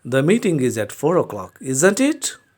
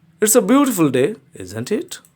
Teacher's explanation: if we really want to know the answer and we are not sure of the answer we'll use the rising intonation